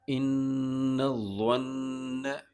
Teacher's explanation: اس میں نون مشدد آ رہا ہے دو جگہ پر، دونوں نون کے ساتھ غنہ ہوگا